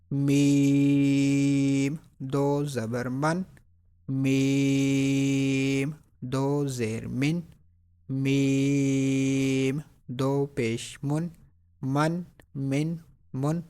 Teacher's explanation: میم کو ادا کرتے وقت ناک میں آواز نہیں لے کے جانی